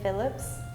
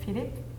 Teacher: I think French was really surprising to me because you don't pronounce the S.